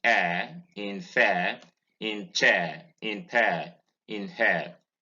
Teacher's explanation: number 18 a closed front centering diphthong the next diphthong is vowel 19 is the diphthong air it's a mid-front centering defunct it occurs in a ir in air in fair in